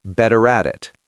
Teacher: The T in better becomes a flap D, better. The R at the end of better is hard, better. The T in at becomes a flap D